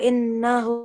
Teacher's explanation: So whenever we have a Ghunna rule with Mim Mushaddad or Noon Mushaddad, we prolong the sound, the Noon sound, for 2 seconds.